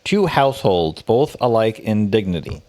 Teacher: a line of verse with five metrical feet each consisting of one short or unstressed syllable followed by one long or stressed syllable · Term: I Amic pentameter